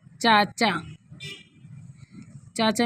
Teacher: एक में तालव्य ध्वनियों ध्वनियों का प्रयोग हुआ है। तालव्य ध्वनि च है